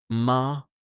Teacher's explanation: Voice drops um softly. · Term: falling tone